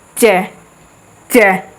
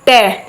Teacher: मुर्धन्य में झटके से जाके लगेगी ऊपर की तरफ ट देखो बोल के देखो च च ट लगी